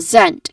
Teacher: It starts with a buzzing sound, although the spelling of the word is letter S, which is a hissing sound